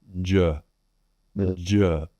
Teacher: Make sure that you vocalize or voice the sound all the way through. One of the challenges I find with Vietnamese speakers is not voicing the sound.